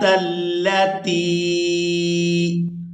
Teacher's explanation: تا کو یاء مدہ کے ساتھ ملاتے ہوئے کھینچ کر ادا کریں گے